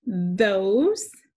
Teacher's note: And I also hear O, consonant E. In the S, it makes the Z sound.